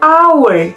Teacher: a careful pronunciation of the word hour begin with a vowel quality similar to a, goes on to u, then ends in a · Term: triphthong